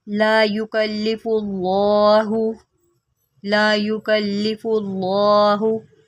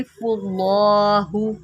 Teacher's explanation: अल्लाह की लाम से पहले फ़ा है तो हम अल्लाह की लाम को मोटा करके पढ़ेंगे। फुल्लाहु, इसको फुल्लाहु नहीं पढ़ेंगे, इसको पढ़ेंगे फुल्लाहु।